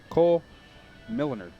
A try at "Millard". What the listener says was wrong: Why you got an N in there?